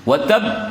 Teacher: Kadang-kadang orang mengatakan wa tab saja, padahal di situ ada tasydid pada huruf qalqalah di akhir ayat. Watab, ditekan, ditahan, kemudian dikeluarkan, dipantulkan. Watab, tahan dahulu, hanya dikeluarkan.